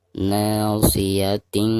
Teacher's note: Na mad tabi'i dipanjangkan 2 harokat.